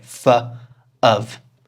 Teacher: They're said as /fə/ and /əv/ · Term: weak forms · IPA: /fə/ /əv/